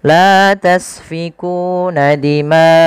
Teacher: Kemudian pada lafal dimaakum, panjangkan huruf ma atau panjangkan bacaan ma sepanjang empat harakat. Karena pada lafal maca mad wajib muttasil.